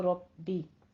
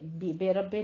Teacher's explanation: तशदीद नबर भी करना है और फिर कसरा की आवाज़ को बारीक करना है